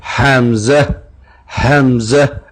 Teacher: اقصی حلق یعنی نیچے والے حصے سے جو سینے سے متصل ہے